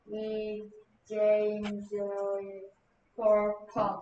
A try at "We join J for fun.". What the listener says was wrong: 제인이 아니고, 오케이. 이렇게 썼는데요. Join. We join J for fun.